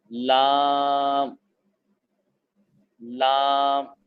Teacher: کنارہ زبان جب مسوڑے سے مل جائے تو لام ادا ہوتا ہے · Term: لام کا مخرج